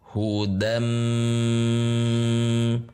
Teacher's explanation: Berarti tanwin masuk ke huruf mim dengan ghunah dengan dengung. Yang ditandai masuknya tersebut di sini dengan tasydid. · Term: idgham bighunah